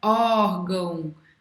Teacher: a mais forte é a penúltima, é uma paroxítona